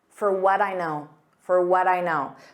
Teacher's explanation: so for becomes an unstressed fur